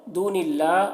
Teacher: اللہ کلام کو باریک پڑھیں گے کیونکہ اللہ کلام سے پہلے زیر ہے